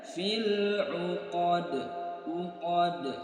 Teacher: terjadi hukum qalqalah kubra, pantulannya lebih besar dibandingkan dengan qalqalah sughra